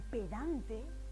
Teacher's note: En pedante, por ejemplo, esa intensidad, ese acento está en dan. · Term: acento prosódico